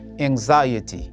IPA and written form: æŋˈzaɪəti (Anxiety)